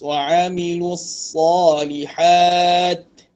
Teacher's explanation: sifat huruf hamas pada huruf ta, itu hamas ni keluarnya angin. Diraikan dengan lebih jelas.